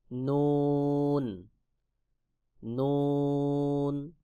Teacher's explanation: জিহ্বার আগা তার বরাবর উপরে তালুর সঙ্গে লাগাইয়া নুন উচ্চারণ হবে, যেমন নুন নুন।